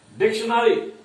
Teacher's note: डिक्शनरी, डिक पर अधिक उच्चारण है